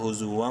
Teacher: ہا پیش ہو زا پیش زو واو واو دو زبر واو. تنوین کے بعد واو حروف یرملون میں سے ادغام مع الغنہ ہوگا